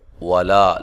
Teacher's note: وَلَا، لا الف مدہ ہے، واو کو ادا کرتے ہوئے ہونٹوں کو گول کرنا ہے